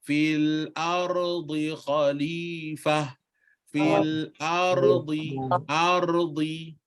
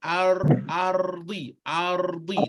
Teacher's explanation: tak boleh sekat antara ro dengan di tu